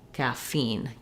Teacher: caffeine has second syllable stress. So the feen syllable has a clear vowel and it's longer.